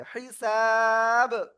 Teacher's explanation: কলকলার অক্ষর 5টি, কফ ত বা জিম দাল, ওই 5টার একটা অক্ষর এখানে সাকিন হয়ে যাচ্ছে, এজন্য ধাক্কা দিয়ে পড়তে হবে।